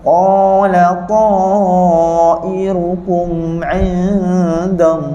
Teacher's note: Cantik, masa kita sebut 'indallah, lafaz Allah dekat huruf ha tu kita nak matikan dengan cantik huruf ha tu. Jadi masa matikan lafaz Allah, kalimah huruf ha tu, bunyikan angin dia.